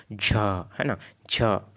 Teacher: श से ज़्यादा संघर्ष हो रहा है, किसमें, झ में हो रहा है